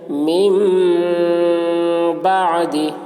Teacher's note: نون ساکن کے بعد با آ رہا ہے، اس لیے نون کو میم سے بدل کر غنہ اور اخفا کے ساتھ پڑھیں گے، اس کو اقلاب کہتے ہیں۔